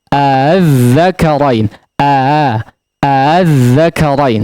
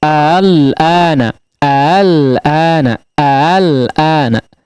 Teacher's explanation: Tashil di sini adalah hamzah pertama dibaca jelas, sedangkan hamzah kedua dibaca samar, ya, antara hamzah dengan alif, ya. Jadi hamzahnya tidak dibaca a secara tegas, ya, tapi a, ya, dibaca secara samar.